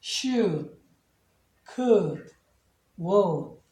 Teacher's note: 여기는 액센트가 다 없어요. 조동사는 액센트가 없습니다. 그래서 should, could, would 이 정도 발음하시면 됩니다.